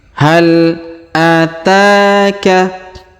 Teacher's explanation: Perhatikan huruf ta kita panjangkan 2 harokat karena ada alif kecil di atasnya.